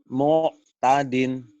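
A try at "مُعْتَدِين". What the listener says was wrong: Kamu nggak bisa ainnya ya? tuh nggak den. Mu'tadin. Orang kayak keselak. Ini keselak ya. Misalkan kamu ada roti atau apa ditelan. Mu'tadin.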